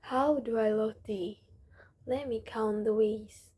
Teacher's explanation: Notice how the voice falls in the places that express calmness and rises in the place with passion. These changes make your speaking sound natural and help people feel the emotion behind your words. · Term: intonation